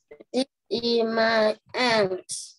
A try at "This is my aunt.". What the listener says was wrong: Ok nào, đừng bỏ chữ S nha, đừng bỏ âm gió nha. Cái này là cô sửa cho cả lớp, tại vì là đến 90% các bạn bỏ rơi mất chữ này của cô nha.